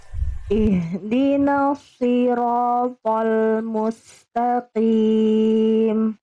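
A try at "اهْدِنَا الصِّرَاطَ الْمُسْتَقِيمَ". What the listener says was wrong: Oke Bunda, huruf shad huruf tebal atau huruf tipis Bunda? Oke, kalau tebal tadi Bunda kurang tebal, angkat pangkal lidahnya, lidah terdalamnya Bunda angkat ya. Jadi kayak seolah Bunda lagi nelan sesuatu. Sli, coba ikuti saya Bunda. Sli. Lidahnya didorong lagi ke dalam. Rasakan Bunda seperti lagi mau nelan sesuatu. Sli.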